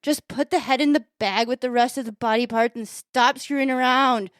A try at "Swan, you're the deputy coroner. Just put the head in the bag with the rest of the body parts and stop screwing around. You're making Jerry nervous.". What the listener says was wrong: Not enough pausing, but that's Just rushing it.